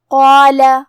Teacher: الف کو دونوں کو بھاری آواز میں پڑھیں گے